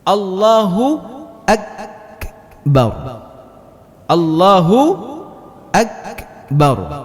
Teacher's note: Huruf kaf ini ketika dibaca, dia tertahan mengeluarkan angin.